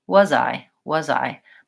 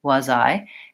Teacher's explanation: So for example, when I say the words was I, it sounds more like was I, was I. My voice stays on from the vowel in was to the vowel in I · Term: linking